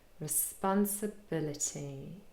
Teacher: But we also have secondary stress on the 2nd syllable, spun, responsibility.